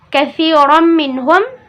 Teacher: karena di sini ada fathatain dan bertemu dengan huruf mim, maka dibaca didengung dua harokat. Masuk dalam hukum idgham bi gunnah.